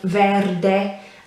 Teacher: in italian very similar you just pronounce the e on the end whereas in english it would be silent um verde and the r obviously you need to roll it